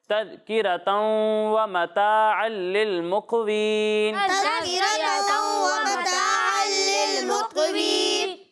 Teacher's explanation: नाक में आवाज़ ले जाकर इसकी अदायगी करनी है और गुन्ना की मिकदार एक अलिफ के बराबर होती है